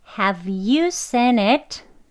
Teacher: have가 아니고 슈아 발음, 게으른 무기력한 소리, 하고 들어가죠.